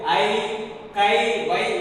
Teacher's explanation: அது பொதுவாக தனியாக படிக்கும் பொழுது, அதாவது ஐ, கை, வை என்று தனியாக படிக்கும் பொழுது தனக்குரிய 2 மாத்திரை அளவில் இருந்து குறைந்து ஒலிக்காமல் அப்படியே ஒலிக்கிறது